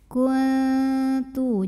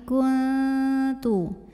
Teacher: Lalu berikutnya ada hukum ikhfa aqrab karena nun sukun menghadapi huruf ta. Maka nun sukun ini tidak dibaca n jelas, melainkan samar-samar.